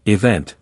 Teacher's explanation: with the first syllable reduced